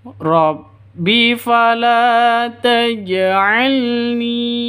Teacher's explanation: Ni panjang dua ketukan karena ada ya mati diawali dengan kasroh